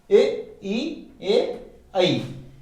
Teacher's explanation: जिन स्वरों के उच्चारण में जीभ का अग्र भाग काम करता है, यानी जीभ के आगे का भाग काम करता है, वो अग्र स्वर कहलाते हैं। इनमें ए, ई, ए, ऐ ये चारों आते हैं।